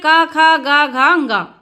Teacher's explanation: कंठ का मतलब होता है गला और गले से निकलते हैं हमारे क ख ग घ जब हम यह बोलते हैं तो जहां से आवाज निकल रही